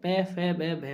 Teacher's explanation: वर्ण का उच्चारण ओष्ठ से होता है, ये वर्ण ओष्ठ्य वर्ण कहलाते हैं